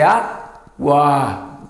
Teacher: A tonicidade está aqui, ó, não está lá no encontro vocálico, mas é água. Sai o U e o A saem juntas, as duas vogais saem juntas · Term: ditongo